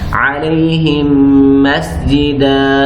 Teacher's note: اس ہا کو ہم نے میم کے ساتھ ملایا ہے اور غنہ ہم نے ایک الف کے برابر